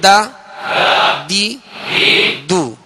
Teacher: زبان کی نوک اور اوپر کے سامنے والے 2 دانتوں کی جڑ، یہ اس کا مخرج ہے دال کا